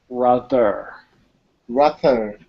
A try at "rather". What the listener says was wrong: there's still some improvement not being a pronunciation class i can't take too much time but it's i would just focus a little bit more on your th sound